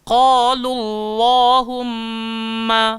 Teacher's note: kalau sebelum Allahumma berbaris atas, kita tebalkan Allahumma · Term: tafkhim